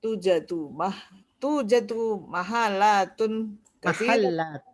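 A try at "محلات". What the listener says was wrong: Mahallat bitasydid. Mahallat.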